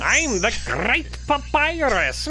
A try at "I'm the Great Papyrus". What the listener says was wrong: I'm sorry, I'm Puerto Rican. You gotta roll the R's, bro.